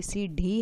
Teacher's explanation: सीढ़ी में बिंदी आती है जिसमें यह उत्क्षिप्त हो जाता है और जीभ को झटके से नीचे आना पड़ता है